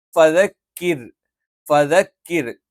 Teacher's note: ക എന്ന് പറയുമ്പം നാവിന്റെ ആരംഭം മേലെ അണ്ണാക്കിന്റെ ഉറപ്പുള്ള ഭാഗത്ത് വെച്ചുകൊണ്ടാണ് നമ്മൾ ക ഉച്ചരിക്കുന്നത്.